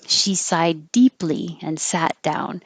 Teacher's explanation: The connections here are the same position, so you don't need to make any position changes between two Ds next to each other and the T and the D